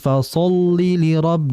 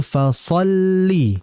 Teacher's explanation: Sadnya tebal dan lamnya tipis.